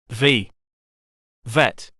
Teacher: voiced, friction with top teeth and bottom lip